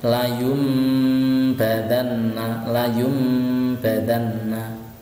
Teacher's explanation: maka cara membacanya adalah bunyi nun sukun diganti dengan huruf mim atau bunyi tanwin diganti dengan huruf mim. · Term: iklab